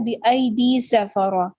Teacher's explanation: بِأَيْدِي سَفَرَةٍ, بِأَيْدِي یا مدد سفرہ, صفا باریک اور فتحہ کے ساتھ ہے اور اس کو حرکت کو لمبا نہیں کریں گے. را موٹا پڑا جائے گا اور تائے مربوطہ پہ ہم سٹاپ کریں گے تو وہ ہائے ساکنہ میں بدلا جائے گا